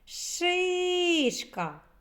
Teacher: правильно перший склад наголошений